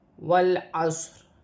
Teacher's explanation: صاد بھی ساکن ہے، موٹا پڑھا جائے گا سیٹی کے ساتھ۔ صاد کو عین کے ساتھ ملایا جائے گا